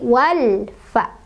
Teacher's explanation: Yang sukun alif lam sukunnya dibaca jelas, tidak boleh mantul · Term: alif lam qomariyah